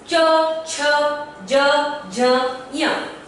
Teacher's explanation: तालु से उच्चारण होने वाले वर्ण है च, छ, ज, झ, य। च का उच्चारण अगर आप करेंगे तो आप पाएंगे हमारी जिह्वा जो है तालु को स्पर्श कर रही है।